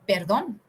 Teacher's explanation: perdon in Spanish is a tongue rolling pronunciation so you should feel while you are pronouncing it is very